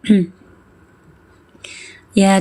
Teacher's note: bagian tengah lidah terangkat ke langit-langit